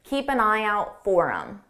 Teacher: And notice that I didn't say for him. I dropped that H sound on him and it sounded like M4M forum and then it also sounds like one word.